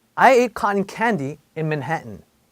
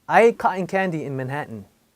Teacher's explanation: 모음과 모음 사이에 T가 두 개 들어갔을 때는 목구멍에 또 뭐가 걸려요.